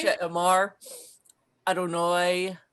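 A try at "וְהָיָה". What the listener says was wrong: Stop. This is not Adonai. This is one word that always gets mixed up with Adonai, and this is the word "and it was." And it's the word, you can read it because you.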